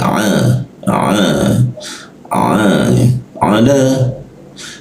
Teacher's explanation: latihan huruf a, posisinya di jakun sini